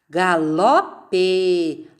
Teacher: A sílaba tônica é o ló.